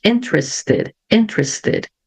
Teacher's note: o T ficou com som de T mesmo, porque antes eu tenho a letra S. Quando eu tenho a letra S antes do T, aí eu mantenho o som da letra T, ok?